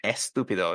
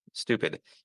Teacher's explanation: Spanish speakers will often add the E the E vowel sound before words that start with s